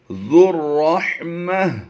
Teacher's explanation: کریں گے۔ اگلی آیت کو پڑھتے ہیں، وَرَبُّكَ الْغَفُورُ ذُو الرَّحْمَةِ، گول تا کو ہم نے وقف میں ہا ساکن سے بدل دینا ہوتا ہے · ہم نے وقف میں ہا ساکن سے بدل دینا ہوتا ہے، ذر زال کو را سے ملائیں گے، یہ واو الف اور لام تینوں ہی سائلنٹ ہو جائیں گے تو بن جائے گا زال را پہ ذر، ذر رحمہ، لو